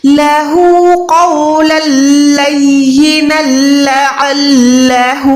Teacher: अब यहाँ पर देखिए दो जबर के बाद लाम है, यहाँ पर शद है, लेकिन हमने अभी आपने नोट किया होगा कि हमने यहाँ पर गुन्ना नहीं किया। तो यहाँ पर जितनी भी शद मैंने अदा की, मैंने किसी पर भी गुन्ना नहीं किया